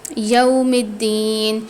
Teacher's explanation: واو پر جزم آ جاتا ہے تو اس کو ایک الف کی مقدار کھینچ کر پڑھتے ہیں